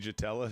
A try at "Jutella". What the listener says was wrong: You know you can't say a hard J.